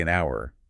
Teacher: say an hour because of that vowel sound at the beginning even though it's spelled with an H it sounds like it starts with the vowel